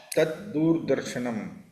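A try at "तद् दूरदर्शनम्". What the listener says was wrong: Dura darshanam. Unlike Hindi, you can't short any letters here. You have to pronounce the whole word. Dura darshanam.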